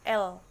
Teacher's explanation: ujungnya menyentuh punggungan alveolar dan satu atau kedua sisinya berada di dekat gigi atas tetapi tidak terlalu bersentuhan